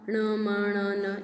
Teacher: नासिका के द्वारा हम ण म ण न ये हम नासिका के द्वारा बोलते हैं, और इसकी संज्ञा क्या है, नासिक्य।